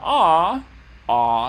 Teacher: I'm lowering my jaw, and dropping the tongue back down here into a low and back position.